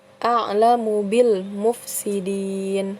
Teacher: alif lam bertemu dengan salah satu huruf qamariyah yaitu huruf mim, di mana alif lamnya dibaca jelas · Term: alif lam qamariyah